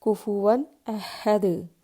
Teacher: ساکن دال کو صرف ہم اس طرح سے پڑھیں گے کہ آواز لوٹتی ہوئی محسوس ہوگی